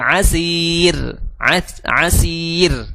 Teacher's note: Asir itu tipis juga r-nya